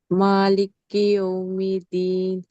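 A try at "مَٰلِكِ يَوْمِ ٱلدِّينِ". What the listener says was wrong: దాల్ని నొక్కి చదవాలి. దాల్ కింద దావత్తు. దాల్ ఒత్తు చదవట్లేదు మీరు. శ్రద్ధ ఉంది కదా, దాల్ కింద దావత్తు. యౌమ్ యౌమిద్దీన్ ది దాల్ కింద దావత్తు. యౌమిద్ యౌమిద్దీన్ దాల్ కింద దావత్తు రావాలి.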